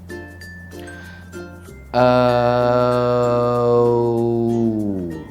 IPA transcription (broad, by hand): əʊ